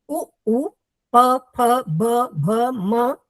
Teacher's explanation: इनमें दोनों होठ मिलते हैं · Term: ओष्ठौ